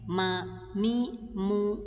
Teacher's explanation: huruf mim keluar ketika kita menempelkan dua bibir kita